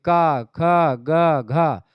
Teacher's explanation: कंठ से निकलती ध्वनियां तो ये कंठ ध्वनियां है